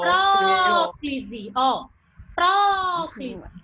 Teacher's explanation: Onde é que tá o acento? No pró. No ó. Próclise, ó.